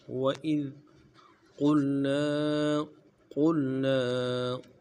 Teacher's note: قوف کو موٹا ادا کرنا ہے اور قوف کو لام کے ساتھ ملانا ہے ، اور لام کے بعد جو نون ہے نون کے اوپر